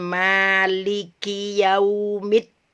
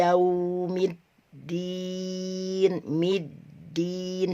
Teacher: cuma tertahan saja ya karena dia tasdid ya tertahan tapi tidak terputus